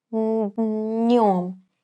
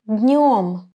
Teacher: I touch my hard palate with the middle part of the tongue, днем, and direct the air to my nose to produce a nasal sound н